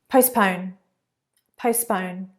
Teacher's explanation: The T is not very strong there.